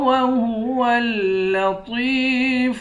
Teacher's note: واو کو تشدید والے لام کے ساتھ ملا کر سختی کے ساتھ پڑھیں گے